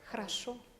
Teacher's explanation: Ahora usted lo dice jarayo, pero existe un fenómeno que se llama reducción silábica, que mientras más alejada esté la vocal de la sílaba tónica acentuada, el sonido disminuye. Entonces, la o se pronuncia como una a, pero no una a.